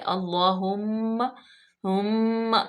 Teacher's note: میم پہ ہم اس لیے کریں گے کیونکہ میم مشدد ہے، غنہ پیدا کریں گے۔